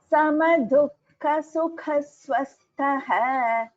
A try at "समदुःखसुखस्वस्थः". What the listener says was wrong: Bhagini, you are chanting dukkha-sukha. It is dukkha-sukha. There is no sa after before Su. Here all of you please note samadukha sukha swastha. Samadukha sukha swastha. The visarga after sukha followed by swa, it becomes visarga sakara sandhi.